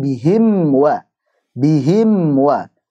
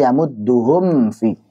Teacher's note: Karena mim makhrajnya dari 2 bibir sekaligus, sedang fa dari bibir bawah bagian dalam ketemu dengan ujung gigi seri atas.